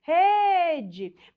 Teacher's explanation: Perceba que a sílaba tônica é aquela que se estende. A sílaba que se estendeu é a penúltima sílaba.